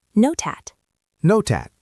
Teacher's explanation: Let's look at the first link. Not at. The T connects to the A.